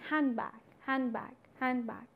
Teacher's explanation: the da is not realized, rather it gets influenced by its neighboring sounds, right? And it is no more the cluster, it is no more the combination of three consonants, na, da and ba, one is skipped and therefore the two sounds are realized and you say handbag, handbag, handbag. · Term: elision